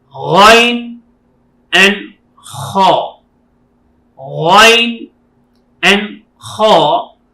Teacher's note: These 2 letters is reading with the beginning of the throat.